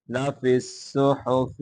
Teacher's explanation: فا کو آگے صاد کے ساتھ ملائیں گے